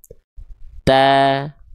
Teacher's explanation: Jadi rongganya terbuka. Makanya suaranya tidak berbobot tapi ringan.